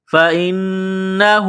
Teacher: نون مشدد ہے، غنہ کریں گے، آواز ناک میں چھپائیں گے